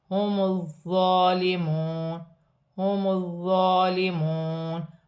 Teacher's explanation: واو مدہ بن رہی ہے، ایک الف کی مقدار کھینچ کر پڑھا جائے گا